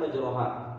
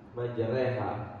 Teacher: Kalau di riwayat Hafiz an Asim, yang dimiringkan bunyi fathahnya hanya satu di kalimat majroha, dibaca majreha. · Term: memiringkan bunyi fathah